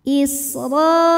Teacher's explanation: Huruf ra dibunyikan secara tafkhim karena berharokat di atas, maka bacanya tebal.